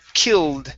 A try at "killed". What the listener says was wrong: it's killed the e is silent